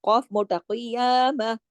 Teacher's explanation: قاف موٹا، قیامہ، یا کے اوپر کھڑی زبر ہے، ایک الف کے برابر پڑھا جائے گا